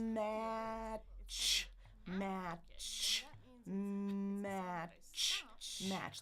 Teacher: It's called an affricate, and that means it's a sound that I stop, and then I let the friction take over.